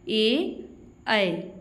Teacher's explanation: कंठ तालव्य स्वर जिसमें कंठ और तालु दोनों का प्रयोग होता हो